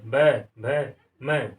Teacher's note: पै वर्ग के व्यंजनों का जब हम उच्चारण करते हैं तो हमारे ओंठ जो है एक दूसरे से को छूते हैं